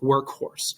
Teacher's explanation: It's that K sound, right? A little puff of air comes out of your mouth, workhorse.